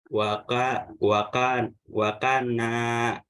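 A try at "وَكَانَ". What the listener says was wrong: Ya, kaknya itu ada punya alif, fathah bertemu alif, dibaca panjang.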